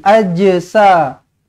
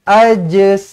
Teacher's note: Huruf jim kalau lantun wajib kena ada bunyi je. Tak boleh ajsamuhum. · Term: qalqalah